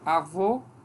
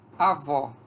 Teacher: a diferença entre vogal fechada e a vogal aberta